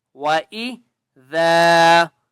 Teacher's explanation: ذال کے آگے الف ہے، ایک الف کی مقدار کھینچ کر پڑھیں گے